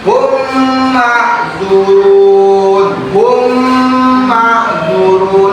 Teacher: Cara membacanya yaitu memasukkan atau ditasdidkan huruf mim sukun, mim matinya ke huruf mim yang berharokat dan dibaca dengung selama 2 sampai 3 harokat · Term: idgham mim